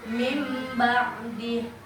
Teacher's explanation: Apa itu hukum tajwid iklab? Yaitu mengubah bunyi nun mati dan tanwin menjadi bunyi mim